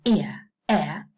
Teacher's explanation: the tongue is going down to the schwa